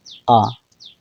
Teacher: जब हम इसका उच्चारण करते हैं तो जीव का मध्य भाग कार्य करता है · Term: मध्य स्वर